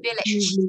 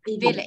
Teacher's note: Trọng âm rơi đầu là VLIT. Dạ, cái LIT thì sẽ không thả nặng đâu ạ.